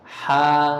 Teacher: Ketika dia bergandengan dengan alif, maka ha ini menjadi panjang, menjadi ha seperti itu. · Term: alif mad